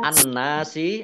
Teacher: Kemudian an-nasi alif lamnya alif lam syamsiyah tidak dibaca, langsung masuk ke huruf nun. Nunnya ada tasdidnya, dibaca gunnah atau mendengung, ditahan 2 harokat.